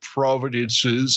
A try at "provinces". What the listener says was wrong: No, drop the D. It's just a province. It's not like Provinces.